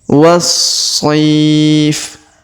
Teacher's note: Huruf so dipanjangkan 2, 4 atau 6 harokat karena di depannya terdapat ya sukun